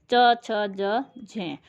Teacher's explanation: ये दोनों का मिला जुला रूप है कि उच्चारण स्थान के साथ स्पर्श भी होता है, साथ में घर्षण करते हुए हवा बाहर निकलती है। इसमें हमारा च वर्ग आ जाएगा। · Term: स्पर्श संघर्षी